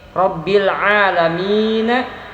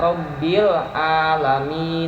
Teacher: mengganti huruf bunyi huruf Ain menjadi Hamzah